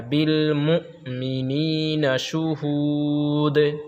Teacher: مؤمنین ہم نے آپ کو بتایا کہ حمزہ ساکنہ، یعنی جب حمزہ پر ساکن ہو، جزم ہو تو اس کو پڑھنے میں جھٹکا ہوتا ہے